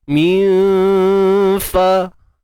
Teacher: Sembunyikan nun. Jangan sebut nun tepat pada makhraj. Dan kita sembunyikan tu di sisi huruf fa. Standby nak sebut huruf fa. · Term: Ikhfa haqiqi